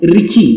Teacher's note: तलव्य श और मूर्धन्य स जो पेटकटवा स भी कहते हैं हम लोग, उसका उच्चारण की जगह पे दंत स और ख का उच्चारण होता है।